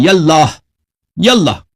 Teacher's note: تو یہ الف یہ الف جو ہے اللہ کا یہ الف وصل کے لیے. تو یہ جب یا کہیں گے تو اس کے ساتھ یہ الف کے تلفظ نہیں ہوگا